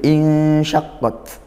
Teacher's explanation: ikhfa haqqiqi dibaca samar dan juga didengungkan · Nah, kalau kita baca sendiri insyaqqat, di situ ada nun sukun bertemu huruf shin. Nah, di sini ikhfa haqiqi dibaca samar dan juga didengungkan